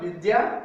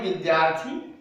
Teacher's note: विद्या जोड़ अर्थी, यहाँ पर विद्या आ है, अर्थी में अ है, आ और अ के बीच संधि हो रही है और आ बन रहा है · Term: आ की संधि